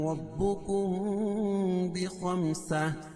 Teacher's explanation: یعنی میم ساکن کے بعد با ہے تو یہاں اخفاء شفوی ہوگا